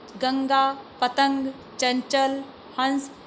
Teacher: इन सारे शब्दों को उच्चारण देखिए करते समय हवा जो है नाक के रास्ते से निकल रही है। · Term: अनुस्वार